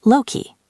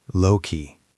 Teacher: It's not lowkey with the stress at the end. It's usually balanced or slightly stressed on low.